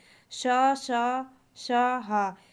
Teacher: श, श, श, हा, ये संघर्षी वर्ण होते हैं